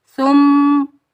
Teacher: میم پر ہم ایک الف کی مقدار غنہ کریں گے اور بغیر کھینچے پڑھیں گے.